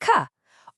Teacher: the sound comes from way, way back in your throat. Your lips and tongue aren't really doing anything here. It's a sound you kind of feel just as much as you hear.